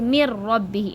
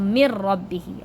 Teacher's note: Okay, mir rabbihi, it's not min rabbi, mir rabbi. Mim connects with the ra, so mir rabbihi. Okay, the noon is silent.